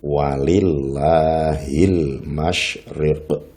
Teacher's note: lam jalalah dibaca tarqiq atau tipis apabila sebelum lam jalalah itu berupa harokat kasrah